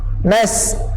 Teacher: Nas ni panjang. Nas. Panjang sekurang-kurangnya 2 harakat.